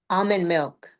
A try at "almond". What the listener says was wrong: Yep, try almond milk.